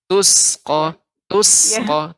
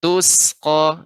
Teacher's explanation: huruf sin ini di antara sifat sin adalah sofir, tipis, tajam. Jadi ketika membaca berikan sin banyak.